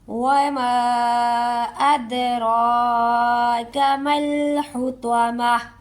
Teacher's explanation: اور اس پر ہم لوگوں نے یہ توجہ بھی کرنی ہے کہ دال ہے، دال پر کلکلا ہوگا، ٹھیک ہے۔ دال کو آواز جنبش کے ساتھ ادا کرتے ہوئے ہم اس ورڈ کو ادا کریں گے، ہلاتے ہوئے، لہراتے ہوئے